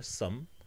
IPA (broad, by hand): sʌm